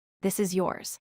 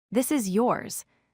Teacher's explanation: this is yours can be a question with rising pitch